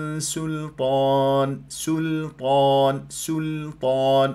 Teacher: اعمل على تخليص السين من شائبه الاطباق حتى لا تتحول الى صاد ببيان استفال وانفتاحها وتحقيق صفاتها من همس ورخو هي طبعا مستفل